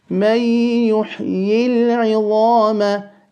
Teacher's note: The ha is a letter of hams. Allow the air to flow when pronouncing it and straight into the ya. And do not say مَنْ يُحِي الْعِظَامَ.